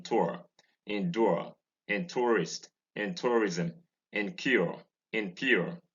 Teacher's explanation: one vowel number 20 is the final vowel the diphthong uru a close back centering diphthong